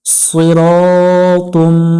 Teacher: সদ অক্ষর একটু মোটা করে পড়বো আমরা, সই সি পড়বো না। র, জবরের বামে খালি আলিফ আছে, এক আলিফ টান দিয়ে পড়বো এবং এখানে একটু সতর্কতার সহিত উচ্চারণ করব যেন রা উচ্চারণ না হয়।